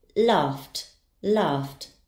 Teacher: Its sound ends in f. The ed ending will be pronounced as t.